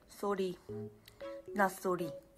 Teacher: she says sorry with the like rolled R a bit